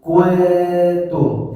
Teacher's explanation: Karena ta termasuk huruf tipis, maka tidak monyong ku tum tapi kuum. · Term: ikhfa